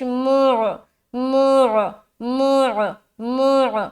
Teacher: میم کو نکالتے ہوئے حلق میں آواز لے جانی ہے.